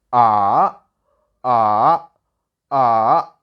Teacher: first you have to make your voice from high to low then to high like ah ah ah so this is the third tone and